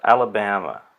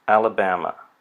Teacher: So the 2 schwas indicate the 2 schwas are clearly unstressed syllables. The first syllable has secondary stress, and the third syllable has primary stress.